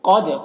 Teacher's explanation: قاف حروف مستعلیہ میں سے ہے اور دال میں قلقلہ ہوگا